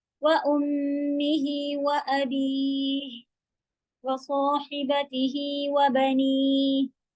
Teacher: صاد سیٹی کے ساتھ ہیوی، ہا حلق کے بیچ کے حصے سے